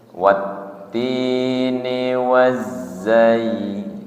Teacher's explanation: z ujung lidah berada di antara ruang gigi seri atas dan ruang gigi seri bawah nggih. Kemudian sifatnya adalah sofir, desis nggih.